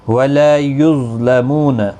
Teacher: ظا ساکن پر قلقلہ نہیں ہوگا، مستعلیہ ہے، پر پڑا جائے گا